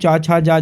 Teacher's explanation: ये तालव्य ध्वनियाँ हैं